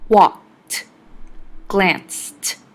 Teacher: In walked and glanced, the ed makes a t sound.